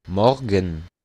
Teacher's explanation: no pronuncia la E que está en medio de la GN, sino que de un solo. Morgen. Morgen.